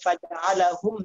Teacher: এখানের মধ্যে হুম গুণনা নেই, ধরলেই গুণনা হয়ে যাবে। ফাজআলাহুম একটু ধরলেই গুণনা হয়ে যাবে।